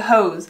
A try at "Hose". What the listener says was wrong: One more time. It's two syllables.